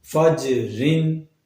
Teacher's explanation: جیم کی آواز دوبارہ لوٹ کر آئے گی، یہ بھی قلقلہ حروف میں سے ہے